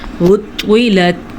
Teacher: طوا کو اس لیے پر پڑھیں گے کیونکہ طوا حروف مستعلیہ میں سے ہے۔ طوا ان حروف میں سے ہے جن کو ہر حال میں پر پڑھا جاتا ہے، خواہ ان پہ زبر ہو، زیر ہو یا پیش ہو، تو ہم اس کو پڑھیں گے عُطِّلَتْ۔